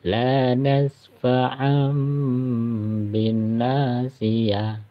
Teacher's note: Cara bacanya ya, dipanjangkan 2 harokat, kemudian tanwinnya atau nun mati diganti dengan huruf mim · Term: hukum iklab